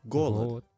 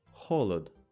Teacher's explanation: the most important pronunciation difference between the two alphabets is the letter G, which is hard in Russian and soft in Ukrainian. This is evident in words such as hunger, golad, >> hol.